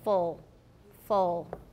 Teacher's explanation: if you make a very very back oo you'll get a dark l as in full full with no alveolar contact